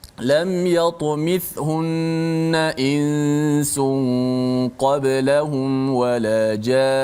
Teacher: Nun sabdu, walaupun ketika wakaf tetap dibaca panjang dengung itu.